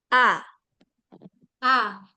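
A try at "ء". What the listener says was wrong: Heeh. Bagus.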